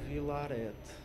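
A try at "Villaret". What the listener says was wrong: Vilaré, não diz o T.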